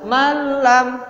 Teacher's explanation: Di sini ada malam, ya, bukan manlam. Ada nun sukun bertemu dengan lam, dibaca malam, bukan manlam.